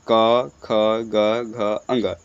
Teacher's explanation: क वर्ग बोले जाते हैं कंठ से